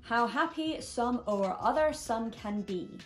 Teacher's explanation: can be now the word happy has two syllables standard and you know that the ha part of happy is the stressed part and that fits perfectly within the I am pentameter totally standard